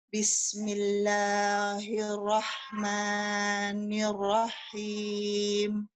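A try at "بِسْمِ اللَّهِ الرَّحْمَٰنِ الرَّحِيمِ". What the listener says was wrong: Lahnya kepanjangan, Bu. Lahnya kepanjangan. 2 saja, Bu ya. 2 saja ya. 1 alif saja. Jadi Ibu seolah-olah menggoyangkan tangan Ibu dari kiri ke kanan.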